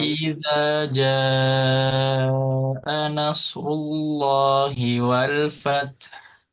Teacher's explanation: mat wajib muttasil ini dibacanya lebih dari 2 harokat. Nggak boleh sama dengan 2 harokat. Harus lebih dari 2 harokat.